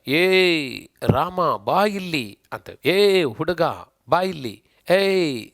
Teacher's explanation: ಎ ಅಂದ್ರೆ ಮೂರು ಮಾತ್ರ ಕಾಲು ತಂಕ ಹೋಗುತ್ತೆ ಅಥವಾ ಅದಕ್ಕಿಂತ ಜಾಸ್ತಿ ತಗಬಹುದು ಅಷ್ಟು ಸಮಯವನ್ನ ಹೇಳುವಂತ ಅಕ್ಷರಗಳು ಕೆಲವು ನಾವು ರಚಿಸಿಕೊಂಡಿದ್ದೀವಿ ಅದನ್ನ ಪ್ಲುತಸ್ವರಗಳು ಅಂತ ಕರೀತೀವಿ